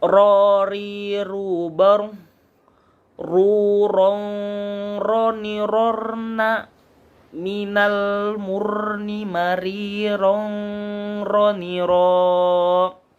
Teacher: Ro ini di bagian langit-langit, di bagian langit-langit di ujung lidah. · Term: huruf ro